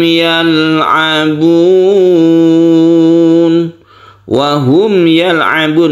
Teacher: yalabun ini adalah Mad Arid lisukun yang kita panjangkan boleh satu dua atau tiga Alif Mad artinya panjang Arid artinya menghadapi lisukun menghadapi huruf yang disukun